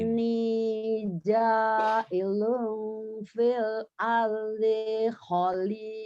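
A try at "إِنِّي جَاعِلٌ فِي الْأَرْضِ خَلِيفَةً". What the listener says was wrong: Dinya pendek. Fil ardi khalifah. Fil ardi. Jadi yang kosar itu jangan ditahan, segera. Inni ja'ilun fil ardi khalifah. Kalau di mad kita boleh klik-klik, kalau di kosar jangan.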